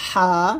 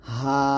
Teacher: হলকের মাঝখান থেকে চাপ দিয়ে চিকন করে বলব